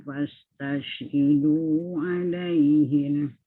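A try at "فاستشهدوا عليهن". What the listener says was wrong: Tahan dulu nun tu.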